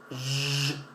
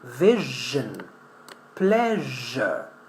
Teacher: We don't have the sound zh with vibration.